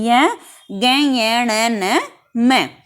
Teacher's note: इन 5 का उच्चारण आप करिए, नाक से आवाज आएगी, यानी कि नासिका की आवाज आती है